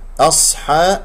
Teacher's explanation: الصاد هنا مفخمة، فلا تفخم الهمزة، هي مرققة لأنها جاورت الصاد